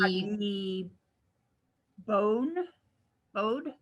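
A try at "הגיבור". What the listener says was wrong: It's a resh at the end.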